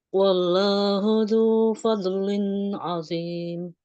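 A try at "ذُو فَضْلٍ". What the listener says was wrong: Jangan dikol-kolahin buatnya. Kesalahannya masih sama dengan yang sebelumnya. Zu fadlin. Jangan dilepas. Kalau dilepas jadinya kol-kolah. Zu fadl. Jadinya gitu.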